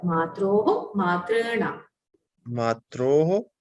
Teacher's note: The hakara should be heard. The visarga at the end should be heard.